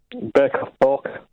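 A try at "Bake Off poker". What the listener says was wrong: Yeah, you're saying porker. It doesn't sound like that to you, but that's what...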